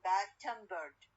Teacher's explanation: bad-tempered السيلابل الثانية والكلمة الثانية عليها الستريس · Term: stress